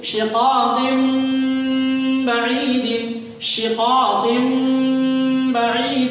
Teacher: اس تنوین کی آواز حذف ہو جائے گی نون والی اور میم اس کی جگہ استعمال ہوگا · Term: اقلاب